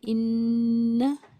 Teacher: یہاں پر نون کے اوپر تشدید ہے، جس کا صاف مطلب یہ ہے کہ نون یا میم پر تشدید ہو تو غنہ ہوتا ہے، لیکن یہاں غنہ کامل غنہ، مطلب زبان کی نوک نون کے مخرج کو بھی چھو رہی ہے، اور نون کا مخرج کیا ہے کہ زبان کی نوک اوپر کے تالو سے ٹچ کرے، اور آواز کا ناک میں باقی رہنا، ٹھہر جانا، یہ غنہ ہے۔